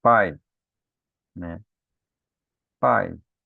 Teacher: nós temos o A mais forte que o I · O som mais forte vem antes da semivogal · Então, o A mais forte é maior, né? E o I menorzinho o som. Então, o maior antes e o menor depois. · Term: decrescente